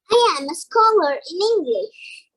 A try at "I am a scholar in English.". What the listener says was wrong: Perfect.